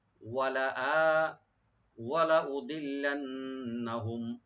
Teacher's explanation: লামে কোনো টান হবে না, আর নুনের মুসাদ্দাদ যেটা এখানে কোনো টান হবে না, আর মিম সাকিন এখানে এজাহার করব আমরা, মানে এজাহার স্বাভাবিক হবে এখানে।